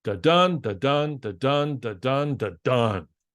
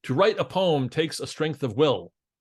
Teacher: It's a thing where each line has 10 syllables and you stress all the even-numbered syllables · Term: iambic pentameter